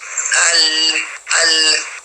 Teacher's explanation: لام لام لام میں کیا ہے کہ زبان کا کنارہ اور اوپر والے دانتوں کے مسودے سے جا کے ملتا ہے، ٹکراتا ہے، تو لام ادا ہوتا ہے